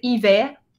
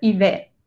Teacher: Es como si descargáramos la E en un poquito de R al final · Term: la R final